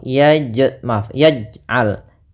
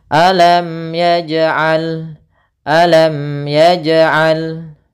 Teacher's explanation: Qalqalah di sini ada pantulan di dalam membacanya, harus kita pantulkan. Tapi dalam pantulan ini jangan sampai ada menambah hamzah atau dia tidak terpantul.